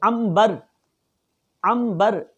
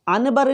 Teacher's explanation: نون ساکن کو میم سے بدل دیں گے، میم بقلیہا. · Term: اقلاب